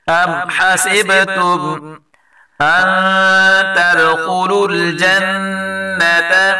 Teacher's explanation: دال میں قلقلہ کریں گے اور خاء کو پر پڑھیں گے، اور نون مشدد آ رہا ہے اس میں بھی گناہ کریں گے۔